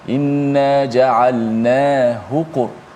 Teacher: Adapun inna ja'alnahu, hu tu dibaca pendek kerana sebelumnya ada huruf mati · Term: ha dhamir